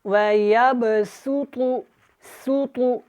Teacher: سین سختی کے ساتھ اور تا کو موٹا پڑھیں گے